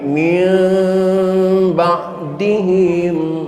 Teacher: Teorinya bibirnya terkatup tidak sekaligus, bukan mim tapi min ba'dihim. Terkatupnya pelan-pelan.